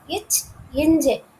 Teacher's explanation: ரெண்டுமே இடையில, நாவோட இடையிலையும் அன்னத்தோட இடையிலும் தோன்றுறது